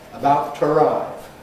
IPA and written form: əˈbaʊt twəˈraɪv (about to arrive)